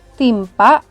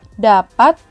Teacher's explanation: fonem T memiliki dua alofon, yakni alofon T biasa dan T tertutup. Jika fonem T yang terdapat pada awal dan tengah kata, seperti pada contoh kata timpa, Tehnya direalisasikan dengan teh biasa.